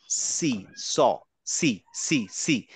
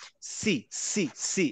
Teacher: সি যখন আমি বলছি আমার জীভের সাথে দাঁত লাগে না সি একটা বাতাস বের হয়ে যায় দাঁতেও লাগে না জীবটা ঠোঁটেও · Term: সিন